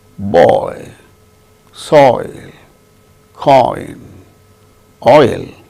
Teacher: another diphthong or double vowel sound, oi, starts with O, ends with E, oi, boy, soil, coin, oil, O-I-L, oil.